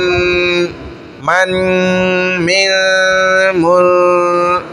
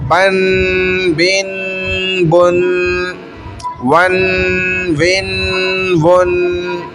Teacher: یہ غنہ ہو رہا ہے ناک کے اندر، 2 تنوین کا غنہ ہو رہا ہے، کھینچ تھوڑی رہے، کھینچتے تو حرف کو نا، ہم تو ناک میں آواز کو روک رہے ہیں، حرف تو ختم ہو چکا ہے پیچھے، تنوین کا اس کا غنہ ناک میں ہو رہا ہے۔